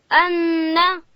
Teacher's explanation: نون ادا کیږي د ژبې غاړه به لوړې ورې ته ورولو